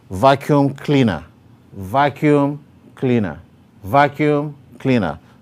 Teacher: the primary stress is on vacuum, while the secondary stress is on cleaner